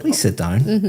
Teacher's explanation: But if I said, please sit down, my intonation is going up.